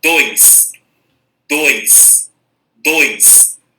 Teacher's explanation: quando a gente pronuncia dois, é uma única emissão de voz. Sai de uma vez só.